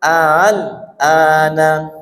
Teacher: Jadi hamzah atau alif yang kedua itu dibaca, akan tapi disamarkan antara alif dan hamzah. Seperti ha tapi bukan ha, seperti ha juga bukan ha. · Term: tashil